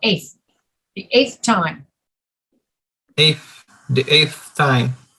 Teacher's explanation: the same thing routinely at the end of the ordinal numbers we don't say eight we just skip the first t and say eighth